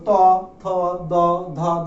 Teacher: জিহ্বার অগ্রটা অর্থাৎ আমাদের এই অংশটা, জিহ্বার সম্মুখ ভাগটা আমাদের দন্তকে স্পর্শ করছে, এই দন্তটাকে স্পর্শ করছে, তাই এইগুলোর নাম হচ্ছে দন্তধ্বনি।